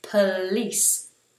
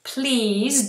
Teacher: there's no long e and it's an S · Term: short s sound